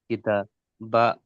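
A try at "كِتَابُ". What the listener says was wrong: আচ্ছা, এই বু, এটাকে টান দিলেন, এখানে টানের কি কায়দা এসছে?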